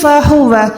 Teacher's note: ہا جو ہے حلق کے نیچے والے حصے سے ادا ہوگا